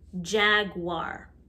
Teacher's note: jaguar sounds like there's a w after the g